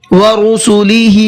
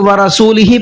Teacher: را پر پیش ہے، رو پڑھیں گے، را نہیں پڑھیں گے۔